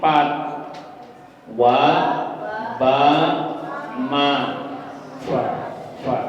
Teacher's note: Berarti disebut 2 bibir, berarti tempatnya ada 2 bibir bawah sama bibir atas. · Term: Syafatain